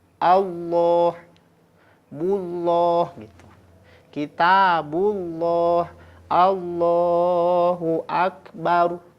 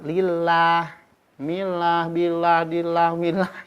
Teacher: Ketika lafaz Allah sebelumnya kasroh. Maka ketika di kasroh, lam jalalah tarkik. Pokoknya tipis weh. · Kalau sebelumnya berharokat fathah, dhammah, maka dibacanya menebal. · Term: lam jalalah tafkhim